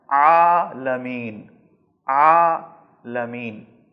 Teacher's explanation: حلق کے درمیان پہ آپ کو زور لگانا ہے، حلق کے بیچ سے زور لگا کر عین کو ادا کرنا ہے